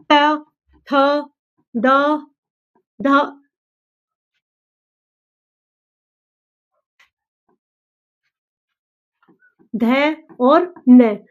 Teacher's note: त जो त वर्ग है, इसको हम बोलेंगे किससे? दांत से। ठीक है? दंत।